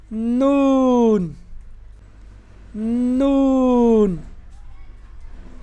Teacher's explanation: नून इस हरफ को अदा करते हुए हंठों को गोल नहीं किया जाएगा।